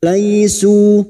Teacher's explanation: su duma diikuti waw sukun 2 harokat mad tabi'i